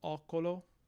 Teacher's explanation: So the differences between these vowels, the initial vowel is due to this this Proto-Romance vowel reorganization, which is going to take the short o of classical Latin and open it up a bit to o. So ocolo.